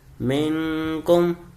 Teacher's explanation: یہاں بھی میں گنہ کر رہا ہوں، یعنی ناک میں آواز دے کے جا رہا ہوں